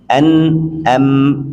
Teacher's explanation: An, am itu wajib kita baca juga dari hidung. An enggak bisa kita tutup.